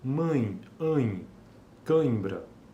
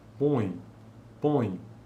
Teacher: Esses são alguns exemplos né de ditongos nasais decrescentes